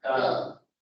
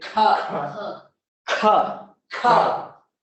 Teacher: If you feel breath here, then you're not saying it correctly. Ka, which is a non-aspirated sound, which means there should be no release of the breath. It should be pronounced without anything being felt on your hand.